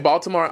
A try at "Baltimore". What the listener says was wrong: Baltimore. But a D, not a T.